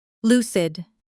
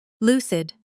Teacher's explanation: It's L U cid with the stress on the first syllable and the U sound is short like in loose but cut off quickly.